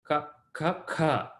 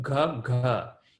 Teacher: soft consonant is you actually feel your vocal cord moving more. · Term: soft consonants